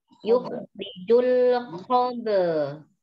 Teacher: Yukhrijul khab'a termasuk huruf qalqalah yang dibaca dipantulkan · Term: qalqalah sughra